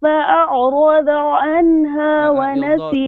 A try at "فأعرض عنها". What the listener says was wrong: Your dot is not good. It's dad is, I know it's a difficult letter, but you should be you should be correcting this from قاعدة, not here. فأعرض. You're saying ضا. فأعرض not ضا.